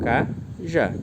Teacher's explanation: a tonicidade está na última sílaba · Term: oxítona